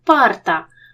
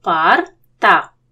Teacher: поряд сонорний риб і глухий ти їх теж розділимо